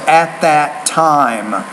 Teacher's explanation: with the T, you have to force more air out of your mouth